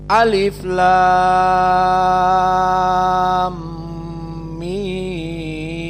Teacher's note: Antara lam dengan mim bertemu, mim sakinah dengan mim muharrakah, inilah idgham, dan ini dinamakan mad lazim harfi musaqqal karena ada tasdid dan ada idgham.